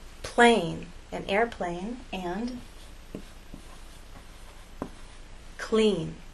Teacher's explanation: There is the sound of your voice from beginning to end. But when L follows P or K, it actually begins voiceless.